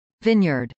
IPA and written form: vˈɪnjɚd (vineyard)